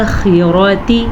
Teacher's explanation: خا کو پر پڑھنا ہے، را کو اس لیے پر پڑھنا ہے، را پہ زبر ہے. تا کو لمبا نہیں کرنا، تا کے نیچے صرف زیر ہے.